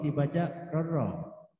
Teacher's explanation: Sedangkan rorro ini dibaca rorro, melebur huruf nun kepada ro tanpa dengung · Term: idgham bila ghunna